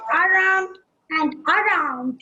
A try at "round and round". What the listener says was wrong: It's not around, my dear. It's only round and round. Round and round.